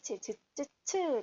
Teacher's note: 처음에 입천장하고 딱딱한 입천장하고 혓바닥이 이렇게 막 공기 흐름을 막다가 그 다음에 조금 열어서 소리를 내요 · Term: 파찰음